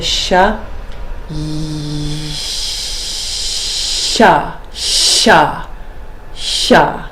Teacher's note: have different sh sounds the shuz um so this shot is made in the palatal part of the mouth the tongue is curved down